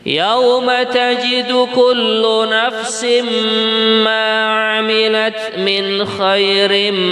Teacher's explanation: ini mendengung tanwin bertemu dengan mim di kalimat yang berbeda